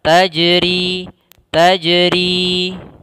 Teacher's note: Karena salah satu sifat huruf jim itu adalah memantul, yaitu qalqalah. Maka tajri, tapi tidak tajri, tidak ada tambahan huruf hamzah.